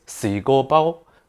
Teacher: it's three flat tones at different pitches and it's ascending within the word.